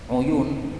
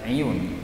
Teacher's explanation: uyun bisa dibaca iyun, ainnya kasrah